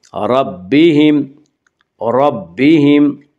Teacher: اس کا قاعدہ ہے کہ را کے اوپر زبر و پیش آئے تو را کو پر پڑا جائے گا، را کے نیچے زیر آئے تو را کو باریک پڑا جائے گا، یا را کے اوپر زبر ہے اس سے را کو پر پڑیں گے